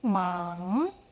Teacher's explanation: Start with open mouth, then the back of your tongue rises into that deep nasal resonance. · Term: back nasal finals